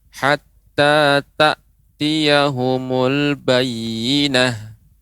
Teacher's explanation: Benar-benar diberhentikan, tidak ada suara nafas mengalir setelah disukunkan hamzahnya.